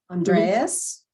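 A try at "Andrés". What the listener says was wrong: There's no A in it.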